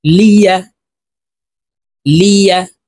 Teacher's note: লাম জের লি, ইয়া জবর ইয়া, লিয়া। ইয়ার উচ্চারণ জিহ্বার মধ্যখান থেকে হবে।